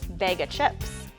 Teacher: often goes to a schwa sound and completely drops the F sound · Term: dropped F